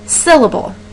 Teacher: syllable where do you hear the stress for that word syllable I hear it at the very beginning so our stress mark would actually go over the sill part of the word rather than the able that would be more unstressed um portions · So our stress mark would actually go over the syll part of the word rather than the able. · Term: stressed syllable